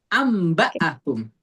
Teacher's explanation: Jadi iqrab itu ketika nun mati ketemu ba nunnya jadi mim